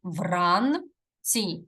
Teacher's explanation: ц М'який приголосний тому що знаходиться перед і і саме і дає м'якість